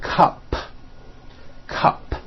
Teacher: unvoiced to let me explain that take the word cup cup it ends with an unvoiced P